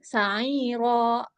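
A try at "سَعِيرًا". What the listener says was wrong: Sa'iro. Panjang bener. Bener. Sa'iro. Udah bener panjang. Tapi jangan sa'iro. Ro. Ro. Tapi sa'iro. Ro dengan ro. Jangan ditekan. Jangan ditekan. Kalau ditekan jadinya sa'iro. Kayak ada seolah-olah ada hamzah di belakang. Nah, makanya dia nggak boleh ditekan. Dilepas aja. Sa'iro. Ro.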